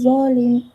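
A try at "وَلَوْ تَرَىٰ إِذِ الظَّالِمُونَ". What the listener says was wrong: Dia dari zal. Zal itu tipisnya. Tebalnya itu wo. Za, wo, iwi, wo. Nggak ada S-nya.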